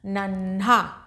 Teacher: आधा न हल्का सा धीरे से न बोला और ह का पूरा स्पष्ट उच्चारण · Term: संयुक्ताक्षर